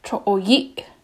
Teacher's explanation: He puts the accent on the I.